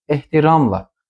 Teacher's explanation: Ehtiramla vurğu sonuncu hecaya düşmür